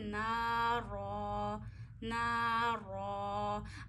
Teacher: अच्छा, अब रॉ भी मोटा पढ़ेंगे. रॉ पे ज़बर या पेश हो, रॉ मोटा पढ़ते हैं, या ज़बर की या पेश की कोई सी भी फॉर्म हो.